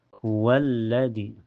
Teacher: Jadi kalau ada lam bertasyid dianggap dua ya dobel. Cara bacanya langsung masuk ke lam yang kedua. Jadi hukumnya alif lam asyamsiyah.